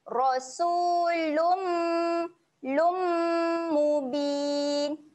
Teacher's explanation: Okey, kalau kita tengok kat sini, okey, pada huruf lam ada tanwin, tanwin tak selari. Okey, tanwin tak selari berjumpa dengan huruf mim ada sabdu, kita kena baca dengan dengung kat sini